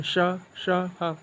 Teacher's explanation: तो संघर्ष का अर्थ ही होता है रगड़ा, यानी रगड़ा, जिसके कारण रगड़ उत्पन्न होने के कारण वायु गर्म होकर निकलती है